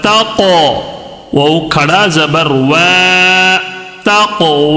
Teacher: واو کے اوپر کھڑا زبر ہے، کھڑا زبر کو ایک الف کے برابر تھوڑا کھینچ کر پڑھیں گے